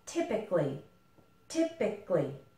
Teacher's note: We actually kind of eliminate this A, and we say it more like typically